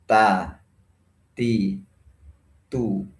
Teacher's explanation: Huruf ta ini diutamakan sifat syiddahnya dan jangan mengutamakan sifat hamsnya. Karena sifat hams ini sifat yang lemah.